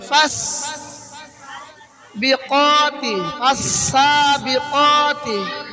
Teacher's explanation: ফা উচ্চারণের সময় উপরের দাঁত নিচের ঠোঁটের পেটের উপরে বসবে। দুই ঠোঁট বন্ধ করা যাবে না। উপরের দাঁত দিয়ে নিচের ঠোঁটে লাগাইতে হবে।